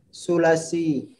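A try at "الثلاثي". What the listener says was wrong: Ats-tsulatsy, ada alif lamnya.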